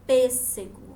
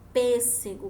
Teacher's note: é diferente do acento agudo ele tem um som fechado é um som mais fechado